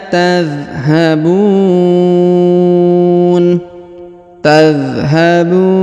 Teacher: huruf bu dibaca panjang boleh 2 harokat, boleh 4 ataupun 6 harokat ya, karena di depan huruf bu terdapat waw sukun sebelum huruf pemberhentian, dan huruf pemberhentian huruf na disukunkan atau dimatikan.